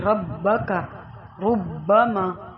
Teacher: را کو موٹا اور باریک پڑھنے کے کچھ قاعدے ہیں. را کے اوپر زبر یا پیش ہو تو وہ موٹی پڑھی جائے گی